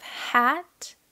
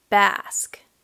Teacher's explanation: we have hat a little higher and basque which feels a little deeper a little further back